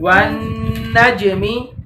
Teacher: جب جیم کے اوپر جزم ہوتی ہے تو جیم کے اندر آپ نے پھر اب چھوٹا کلکلا کرنا ہوتا ہے